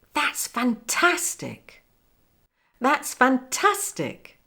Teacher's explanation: With the intonation coming down at the end. But it goes up on the tas.